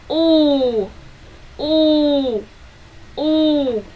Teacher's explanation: Your mouth open, your lip forward, so then push out U vowel, but need to keep into 2 to 3 seconds.